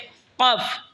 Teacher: জিহ্বার আগা থেকে একটু আগে বাড়িয়া তার বরাবর উপরে তালের সঙ্গে লাগে উচ্চারণ হবে কাফ।